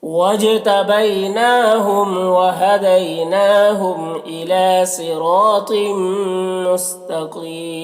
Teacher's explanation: तिम में तो को ऊपर पढ़ेंगे और यहाँ पर तनवीन के बाद मीम में हुरूफ यूबिन में से तो इदगाम में नाकिस होगा। तनवीन को मीम से मिलाकर गुन्ना के साथ पढ़ेंगे। मुस्तकीम में कौफ को ऊपर पढ़ेंगे और यहाँ पर वक्फ़ की सूरत में मद्दा आरिज़ वक्फ़ी होगा, तो इस तरह से पढ़ेंगे।